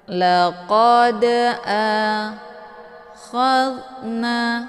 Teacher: dalnya dipantulkan dengan pantulan ringan. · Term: qalqalah sughra